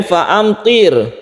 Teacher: Kemudian fa'amtir, to ini agak tebal, hurufnya isti'la